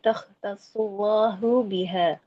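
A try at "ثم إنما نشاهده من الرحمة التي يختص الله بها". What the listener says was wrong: Ya, itu pakai ya. Allati yakhtassullahu biha.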